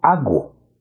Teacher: Se agrega el fonema gutural y entonces se dice hago.